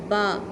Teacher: با کے لیے دونوں ہونٹ، اوپر والے ہونٹ اور آپ کے نیچے والے ہونٹ، دونوں ہونٹوں کے تری والے حصے آپس میں ملیں گے